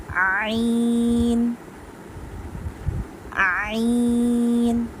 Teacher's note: عین پروناؤنس ہوتا ہے ہمارا حلق کا جو درمیانی حصہ ہوتا ہے وہاں سے، middle part of the throat, یہاں سے ہمارا عین پروناؤنس ہوتا ہے.